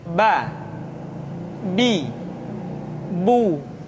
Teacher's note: Huruf Ba dikeluarkan dengan cara merapatkan kedua bibir kita